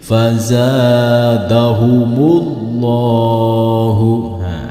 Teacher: Karena alif di sini ketika dibaca dari kalimat yang sebelumnya harus diwasolkan. Dalam arti alifnya tidak dibaca, langsung diwasolkan atau diteruskan ke dalam huruf yang ada di depannya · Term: hamzah wasol